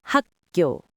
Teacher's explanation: that 기역, final consonant, followed by another 기역, the second 기역 tenses into 상기역, a g sound. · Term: tensing